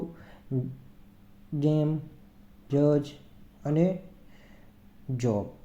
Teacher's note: જે સ્વર તંતુ છે તો ત્યાં શું થશે કંપન અનુભવાશે તો આ ઘોષ ધ્વનિ હશે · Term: વોઈસ્ટ એફ્રીગેટસ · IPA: /dʒ/